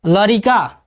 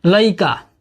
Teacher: भोजपुरी में शब्दों के मध्यवर्ती र का लोप हो जाता है।